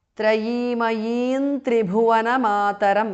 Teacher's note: The Anuswara of Trayimayim changes to N, which is the nasal of the Tavarga.